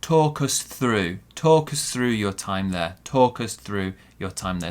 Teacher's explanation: Small stress on talk, big stress on through.